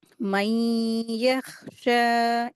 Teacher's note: मई, यहाँ पर गुन्ना करके पढ़ेंगे, इदगाम हो रहा है।